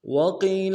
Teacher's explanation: وقیل میں واؤ کو نرم سے ادا کریں گے، قوف کو یا کے ساتھ ملانا ہے، قوف موٹا کریں گے